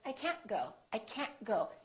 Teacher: They just hold the T.